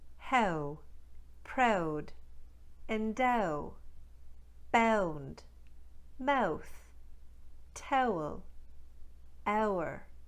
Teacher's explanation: What they do in Newfoundland is instead of starting with ah, they start with eh. The second part of the diphthong remains the same. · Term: ow diphthong